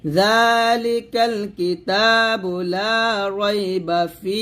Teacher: এখানে আমরা ওয়াকফ ধরবো না, ওয়াকফ না ধরলে বা জবর বাই পড়বো। তাহলে এখানে ফিতে আমরা 3 আলিফ টান দিব, 3 আলিফ টান দিয়ে আমরা হাকে সাকিন করবো